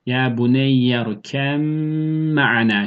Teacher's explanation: Ya buneyyer kem me'ane şeklinde. Bir harf miktarı çünkü mim mime uğramış oluyor. Gunne sıfatı da gelmiş oldu.